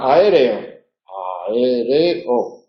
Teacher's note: y por lo tanto están en sílabas separadas aereo cuatro sílabas a e son dos vocales una es baja otra es media